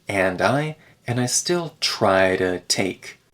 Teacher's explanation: we remove the D in and I